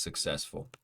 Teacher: second syllable is stressed